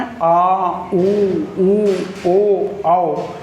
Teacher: पश्च स्वर में आ ऊ ओ आओ, ये लगभग लग रहा है बिल्कुल गले के पास से आवाज़ आ रही है, जीभ के बिल्कुल पिछले हिस्से से बोले जा रहे हैं, तो ये हो जाएंगे पश्च स्वर और समृत स्वर, तो हो ही गया, तो इसे हम बताएंगे पश्च समृत स्वर, ठीक है।